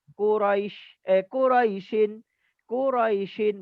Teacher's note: Bila kita baca Quraisyin tak ada mad sama sekali. Tapi bila kita berhenti Quraish maka adalah mad lin.